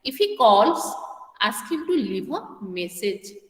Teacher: the tone rises in the first clause and it falls gradually in the second clause